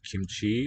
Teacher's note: the chi is one of the strongly aspirated consonants